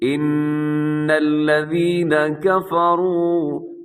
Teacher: نون کے اوپر شد ہے، اپنے غنہ کرنا ہے، آواز کو ناک میں لے کے جائیے گا ایک سیکنڈ کے لیے